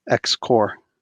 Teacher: X Corps you don't pronounce the P